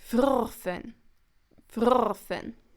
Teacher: in vrfen, actually the pseudovowel, so the double R, is stressed